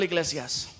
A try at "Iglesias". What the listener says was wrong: It's Iglesias with an I.